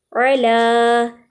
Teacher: لام باریک ادا ہو رہا ہے